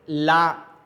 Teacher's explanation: ला जब कहेंगे तो हमारी जुबान थोड़ा सा तिरछी होगी, ला यानी जुबान का सिरा ऊपर जाएगा, ऊपर तालू में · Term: पाशर्विक